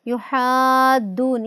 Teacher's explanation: یحادون، اس میں بھی الف مدہ کے بعد دال مشدد ہے، اس وجہ سے ہم اس کو مد لازم پڑھ رہے ہیں